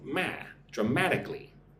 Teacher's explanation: Put the emphasis on the second syllable.